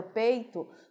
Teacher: o E é a dominante, é a vogal e o I é a semivogal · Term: encontro vocálico